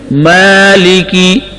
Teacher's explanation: مالکی، کھڑا زبر، کھڑے زبر کے اندر ایک الف کے برابر مد ہوتی ہے